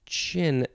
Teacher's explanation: the CH in chin where the value is t plus s h